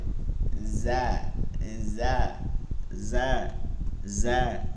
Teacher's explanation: জিব্বার আগা সামনের নিচের দুই দাঁতের আগার সঙ্গে লাগায়, সামনের নিচের যে বরাবর দুই দাঁত আছে সামনের, এই দুইটা দাঁতের, জা কি হবে?